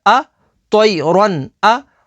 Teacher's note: تنوین کے بعد حمزہ ہے تو یہاں پر حروف حلقی ہے تو یہاں پر اظہار ہوگا یعنی غنہ نہیں کریں گے